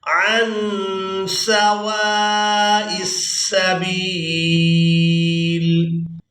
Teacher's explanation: وَضَلُّوا عَن سَوَاءِ السَّبِيلِ. یہاں نون ساکن کی آواز کو ناک میں چھپائیں گے کیونکہ یہاں پر ہم کر رہے ہیں اخفا.